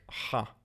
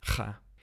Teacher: In biblical, it's a rough H sound, like Ha. And in modern Hebrew, it's harder, like Cha. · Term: Chet